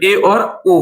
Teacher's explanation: अर्ध संवृत में आधा मुख द्वार जो है आधा मुख द्वार ही बंद होगा आधा खुला रहेगा